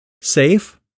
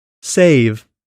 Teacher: the vow length rule the f is a voiceless consonant so the vowels sounds before the f are typically shorter than they are before its voice counterpart the V consonant